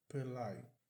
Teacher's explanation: O T aqui não é pronunciado.